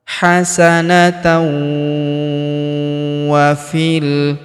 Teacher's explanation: Tanwin an ya bertemu huruf wau berharakat tasydid. Maka tanwin an-nya melebur ke huruf wau yang berharakat tasydid. Masuk ke sini kita tahan dan tekan serta kita dengungkan dua sampai 3 harakat.